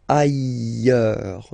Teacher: final S not pronounced, and then you've got this y sound.